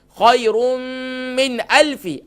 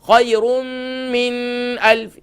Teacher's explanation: یہاں اخفا نہیں ہوگا, یہاں اظہار ہوگا, یہاں نون ساکن کو ظاہر کر کے پڑھیں گے